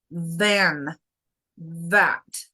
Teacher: El labio tiene que vibrar, el diente en el labio voy a vibrar poquito.